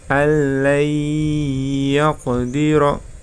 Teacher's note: Yang tadi sebelumnya tanpa mendengung, kemudian yang ini nun sukun bertemu ya dengan mendengung ya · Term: idgham bil gunnah